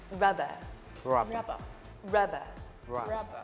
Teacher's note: we say the second part of the word a bit softer · So first of all, it is a two-syllable word. So the stress in this word is on the first syllable, rub. Okay?